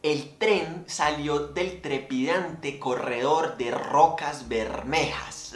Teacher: En esa sonoridad de la R, un fonema vibrante y alveolar que está presente en todos, excepto en uno de los sustantivos de la frase, puede escucharse el sonido del vagón hirviendo bajo el sol, temblando sobre los rieles en el inicio del cuento.